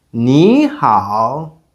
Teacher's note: And hǎo also carries the third tone. When two third tones come together, the first one sounds like the second tone in natural speech. So, instead of having nǐ hǎo, which is a bit difficult and doesn't sound natural, we have nǐ hǎo.